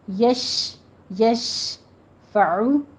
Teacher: من ذلذی میں نون ساکن کا قاعدہ اخفا کی کریں گے اور ذلذی دونوں جگہ دال نرمی سے ہوگا، سیٹی کی آواز نہیں آنی چاہیے، یا مدہ ہے آگے۔ یشفع میں شین پر تفشی کرنی ہے، آواز آپ کی پھیلنی چاہیے، یش یش فعو، عین کی آواز وسط حلق سے ادا کرتے ہوئے ضمہ ہے، ہونٹوں کو گول کیجیے۔